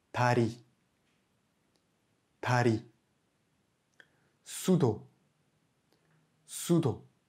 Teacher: plus d'air est propulsé qu'avec un da ou un ta